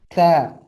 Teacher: ujung lidah kita bertemu ke gusi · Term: huruf lidah